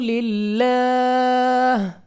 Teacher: لام آف اللہ کو باریک پڑھیں گے اپنی آواز کو نیچے گرا کر، اور وقف میں اس ہا کو گول ہا سے بدل کر پڑھیں گے۔